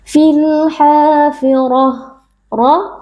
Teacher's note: Huruf tebal kita angkat pangkal lidah karena RO di sini berharakat fathah · kita wakaf pada huruf Ta marbutah Maka ta marbutahnya diganti menjadi huruf ha sukun